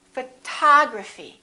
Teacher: we stress the second syllable we say photography this o also is reduced and also becomes this symbol a